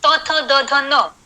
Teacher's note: त वर्ग में जिह्वा जो है वो दांतों को स्पर्श करती है।